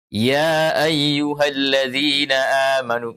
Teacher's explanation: Ya-nya dipanjangkan 4 harakat karena disuruh kita baca dengan mad. Kalau guru kita mengatakan baca dengan qasar, maka kita nanti akan membaca ya ayyuhalladzina amanu, membaca 2 harakat.